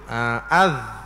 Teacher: makhraj dia ni daripada hujung lidah dan beberapa hujung gigi yang di atas.